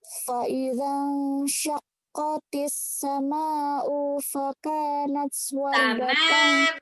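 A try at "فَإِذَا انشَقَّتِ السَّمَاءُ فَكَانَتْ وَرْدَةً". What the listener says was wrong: Mimnya kurang panjang. 6 harokat. Sama'u.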